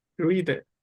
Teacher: हृदय रा की तरह नहीं है। इसमें वाइब्रेट नहीं होती